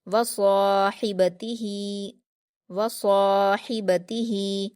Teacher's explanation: हा को ज़रूर हलक से अदा करिए तभी उसका मखरज सही निकलेगा। वसाहिबतिही, वसाहिबतिही, लास्ट वाले हा को हम सीने की तरफ से अदा करेंगे और जो बीच वाली हा है उसे दरमियानी हलक से अदा करेंगे, ये भी आप ध्यान रखेंगे। · ता पर हरकतें से भी जल्दी पढ़ेंगे, हा पर खड़ी ज़ेर है तो इसे या मद्दा के जैसे 2 हरकत खींचकर पढ़ेंगे